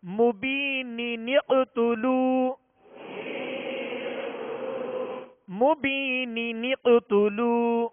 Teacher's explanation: اس کو مبینقتلو نہیں، مبینقتلو، مبینی، یہ نون کے نیچے دو زیر کی جو تنوین ہے، تنوین کے نون ساکن کو زیر دے کر، یعنی نون قطنی کا قاعدہ لگے گا، یہاں دو نون پڑھیں گے